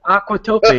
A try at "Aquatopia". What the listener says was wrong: You put the emphasis on the wrong syllable.